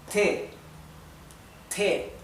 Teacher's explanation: la E se pronuncia un poquito diferente, como más abierta.